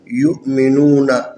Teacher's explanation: یہاں پر واو حروف مدی میں سے ہے، ساکن ہے، اس سے پہلے نون کے اوپر پیش ہے، یہ واو کی مناسب حرکت ہے، لذا واو کو 1 الف کے برابر کھینچ کے پڑھنا ہے۔